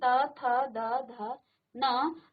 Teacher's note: और त थ द ध न, आप जानते हैं त थ द ध न आपके दांतों या दांत की जड़ों को स्पर्श कर रही है आपकी जीभ, तो इसे कहा जाता है दंत्य।